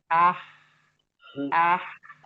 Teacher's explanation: ha itu harus ada rokhawah mengalir